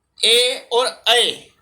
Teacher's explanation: अब कुछ वर्ण ऐसे भी है जो 2 स्थान से बोले जाते हैं, जैसे ए और ए। जो एनक और एडी वाला है वो कंठ और तालु दोनों जगह से बोले जाते हैं